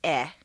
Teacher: The most tense and highest in the throat is eh